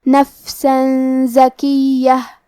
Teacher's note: کلمت نفسن میں آخر میں سین پہ تنوین زبر ہے، پھر زے آتا ہے. کلمت زکیہ زے حروف الاخفاء میں سے ہے، لہذا ہمیں یہ حکم کو غنہ کے ساتھ ادا کرنا ہے · کلمت زکیہ میں یا کو 2 حرف کے برابر پڑھیں گے کیونکہ اس پہ تشدید ہے. آخر میں تا پہ تنوین زبر ہے اور اس پہ چھوٹی سی میم بھی ہے.